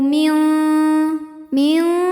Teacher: ya karena ada dan nun sukun menghadapi huruf qf ya maka bunyi Nun sukunnya ini samar-samar siap-siap menuju makhraj huruf qaf yaitu pangkal lidah naik ya disertai bunyi dengung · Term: ikhfa